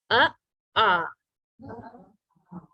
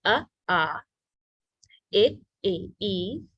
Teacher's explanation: the short a sound sounds more like uh instead of ah